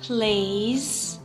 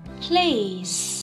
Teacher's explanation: voiced versus unvoiced sound of s